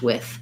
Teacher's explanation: i say with typically with a voiceless th